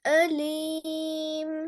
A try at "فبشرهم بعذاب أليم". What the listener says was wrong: ஓ அல்ல, அந்த ஓ தான் பிள்ளை. பிஅதாபின் அலீம். ஓ சவுண்டு போகக்கூடாது. உங்களோட சவுண்ட் ஓண்டு போனதான் பிள்ளை இதுல. ஆ. فبشرهم بعذاب أليم.